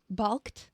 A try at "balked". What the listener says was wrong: Balked. You don't have to, you don't have to emphasize every L in the word and every R in February.